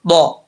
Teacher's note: ضاد کا مخرج آپ کو کئی دفعہ بتا چکا ہوں کہ زبان کی لیفٹ سائڈ جو ہے وہ اوپر والی جو داڑیں ہیں ان کے ساتھ لگے گی تو یہ ضاد پڑھا جائے گا، زبان کو اوپر اٹھانا بھی لازمی ہے، ضا، ٹھیک ہے۔